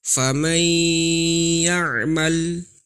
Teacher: nunnya dimasukkan ke dalam huruf ya dan ada dengungnya. Walaupun makhraj huruf ya bukan dari hidung, tetapi ketika nun bertemu ya harus gunnah dulu, dari nunnya masuk dulu ke hidung baru diucapkan huruf ya-nya. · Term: idgham bi gunnah, idgham bil gunnah